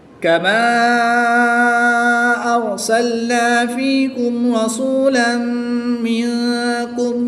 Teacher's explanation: تنوین کے بعد میم حروف یرملون میں سے ہے تو یہاں پر ادغام مع الغنہ ہوگا. غنہ کر کے پڑھیں گے. · الف مدہ کے بعد حمزہ دوسرے کلمے میں ہے تو یہاں پر مد منفصل ہوگی. 2 سے 3 الف تک کھینچ کر پڑھیں گے. تنوین کے بعد میم حروف یرملون میں سے ہے تو یہاں پر ادغام مع الغنہ ہوگا.